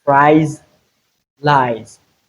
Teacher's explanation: In place of the letter A's, we have the Z sound and not the S. So it is the voiced form of that sound.